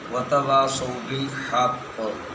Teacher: وقف آئے گا تو بالحق تشدید باقی رہ جائے گی اور اعراب نیچے سے سائلنٹ ہو جائے گا